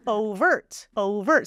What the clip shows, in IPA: ˈoʊvərt